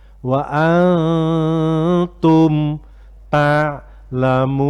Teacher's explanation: Tidak boleh wa an, meskipun dibaca nunnya didengungkan, tapi kalau nunnya jelas salah. Nunnya sudah nggak begitu jelas, sudah samar-samar. Jadi bibirnya, lidahnya itu sudah mengarah ke huruf ta. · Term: ikhfa